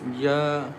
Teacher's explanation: Ya comes from the middle of the tongue